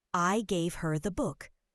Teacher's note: Stressing her emphasizes who received it. Her, not someone else.